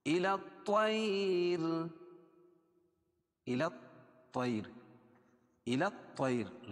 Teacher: الطیر لام کو اس طا میں ملائیں گے اور لام نہیں پڑھی جائے گی، حروف شمسیہ میں سے ہے.